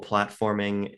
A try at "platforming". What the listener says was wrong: I think you just mispronounced platforming. You said plotforming, and that's story-based 2D platformers or plotformers.